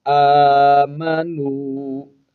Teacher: حمزہ پر کھڑا زبر ہے، اس کو ایک الف کی مقدار کھینچیں گے، واو حرف مدہ ہے، ایک الف ہی کھینچیں گے۔